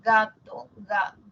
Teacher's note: Cuando nosotros decimos gato, ga, el postdorso toca el velo, no el ápice, ¿no? Sería loco que la lengua que está acá, la puntita, se vaya hasta acá.